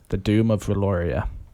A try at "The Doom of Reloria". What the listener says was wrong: You got to roll those R's. Roll them.